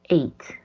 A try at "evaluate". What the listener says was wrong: Wait. Like wait, not eight. Wait. Correct. Evaluate.